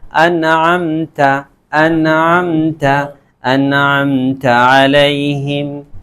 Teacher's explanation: بالکل نون کو کلیئر کر کے صاف ستھرے نکل جائیں گے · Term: اظہار